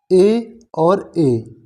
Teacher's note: ए और ए दोनों के उच्चारण में कंठ और तालु की सहायता ली जाती है